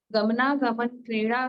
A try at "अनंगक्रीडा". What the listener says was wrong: गमन नहीं है, गमनांग है सीधा, गमनांग क्रीड़ा। बाकी बिल्कुल सही पढ़ा है आपने।